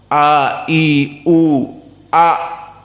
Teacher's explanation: hamzah tudib, sangat dalam, aqsa al halq